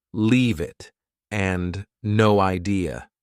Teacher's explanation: both sound like they have no spaces between the words